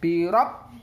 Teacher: ba yang bertasydid maka harus dihentakkan bacanya